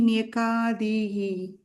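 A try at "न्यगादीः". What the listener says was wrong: Nyagadihi. Nyaka illa. Ka illa. Ga. Kaga difference and kudumbam you are saying it is not kudumbam.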